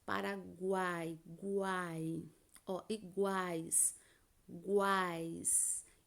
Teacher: Então, eu sai da minha boca esses três fonemas. A vogal sai um pouco mais forte e as semivogais sai mais suave. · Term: tritongo